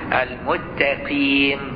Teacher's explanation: بإبدال السين تاء وإدغامها في التاء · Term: ألدغ